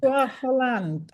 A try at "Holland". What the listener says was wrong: I think it's Holland without the H.